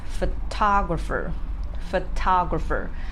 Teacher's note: you will see ah the second syllable is stressed